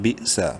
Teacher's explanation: با حمزہ زیر بھی، جھٹکے سے پڑھیں گے. سین زبر سا، بئسا.